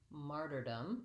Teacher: it still has first syllable stress and i just have a schwa vowel sound and an m · if I'm going to say the word martyrdom, I just add one more syllable, martyrdom. It still has first syllable stress